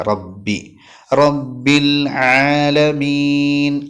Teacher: ബാഹ് പറയുന്ന സമയത്ത് ബാല് കാറ്റ് കൊടുക്കാൻ പാടില്ല